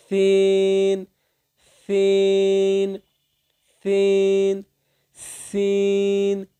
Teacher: জিহ্বার আগা সামনের দুই দাঁতের আগার সঙ্গে লাগিয়ে উচ্চারিত হবে। জিহ্বার আগাটা সামনের দুই দাঁতের আগার সঙ্গে লাগিয়ে দিবেন, তারপর উচ্চারণ করবেন সিন সিন সিন সিন, একটু শীষ দিয়ে সিন সিন সিন সিন সিন সিন সিন সিন।